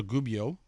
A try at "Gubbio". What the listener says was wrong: Yeah, there's no D in Gubbio. It's Gubbio.